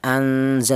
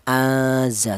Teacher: Jadi cara bacanya ifa ausat itu tidak terlalu dengung, tidak terlalu samar